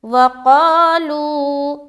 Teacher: واو کو ہم نے جلد ادا کیا، قا میں کھینچا اور لو میں کھینچا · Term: واو مدہ